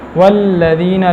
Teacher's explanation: لام کے اندر صفت جہر ہے اور توسط، نہ زیادہ نرمی نہ زیادہ سختی